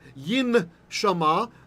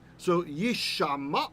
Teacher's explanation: people didn't like to say the N and the sh, so instead it made the sh double. That's why we have a dot in there, the strong dagesh. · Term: assimilation